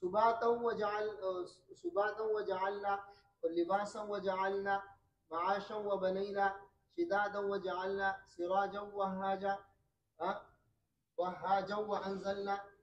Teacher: इदगाम ताम का मतलब है कि नून साकिन या तनवीन के बाद वाव और या जब आएगा तो खलफ उसमें इदगाम ताम करेगा, यानी गुन्ना नहीं करेगा।